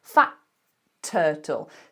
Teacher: So I'm holding, ready to do the T, fat turtle, but I don't release it until turtle.